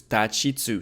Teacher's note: In Japanese, [ti] doesn’t exist It's [chi] [Tu] doesn’t exist either So it's “ta, chi, tsu”